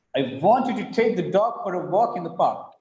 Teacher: want is stressed, take is stressed, dog is stressed, walk is stressed, park is stressed.